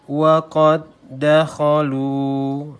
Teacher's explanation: Kalau kita baca dalam qad ini qad, gitu ya. Tapi karena dia idgham mutamatsilain ketemu dengan huruf yang sama jenisnya, maka dia tidak berlaku qalqalahnya